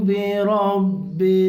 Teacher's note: را کو پر کریں گے، منہ گول کریں گے، را پر ہو جائے گا